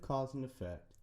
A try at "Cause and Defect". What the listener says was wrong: Cause and Defect, sir. you didn't pronounce the D. It's an important part.